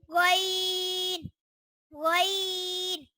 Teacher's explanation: یہ زبان حلق کے اوپر والے حصے سے ادا ہوتا ہے